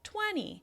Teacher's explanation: the ee is much quieter. It's less loud, less long and less high in pitch